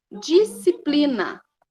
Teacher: percebam que o som do S, ele não sai, ele já vai direto lá para o C